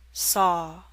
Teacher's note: your mouth is more open for the awe in Saw